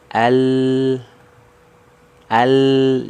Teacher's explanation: ya ujung lidahnya naik Al Al nah ini ujung lidahnya ya ujung lidah yang dari sisi kiri dan kanan ini ya Seluruhnya menyentuh ke langit-langit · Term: huruf lam